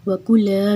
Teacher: کاف کو پتلا رکھنا ہے